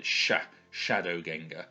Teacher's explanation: the s and the C together is pronounced like a sh in modern English